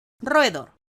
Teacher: tenemos dos vocales abiertas consecutivas en dos sílabas diferentes, la primera y la segunda, por lo que estamos en presencia de un hiato.